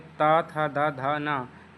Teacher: ये हमारे दंत से मतलब दांत से स्पर्श होके निकलता है